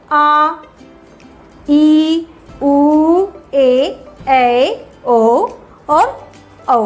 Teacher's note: दीर्घ स्वर का जब हम उच्चारण करते हैं तो इसमें 2 मात्रा के बराबर हमें समय लगता है